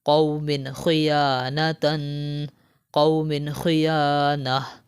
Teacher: یہاں پر دیکھیں تنوین کے بعد حرف حلقی میں سے خا آ رہا ہے تو یہاں پر ہم غنہ نہیں کریں گے